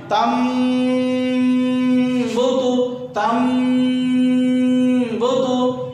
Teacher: اب دونوں ہونٹ بند کر کے آواز ناک میں.